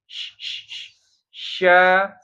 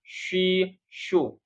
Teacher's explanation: Tapi jangan monyong jangan syau. Dia bukan huruf bibir, dia huruf tengah lidah. Ya, tetap bibirnya biasa saja.